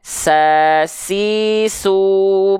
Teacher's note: mengalir nafas ya mengalir nafas Oke atau misalnya huruf huruf Sin Sin juga tuh sifat nafasnya mengalir nafas tuh ya bukan percikan nafas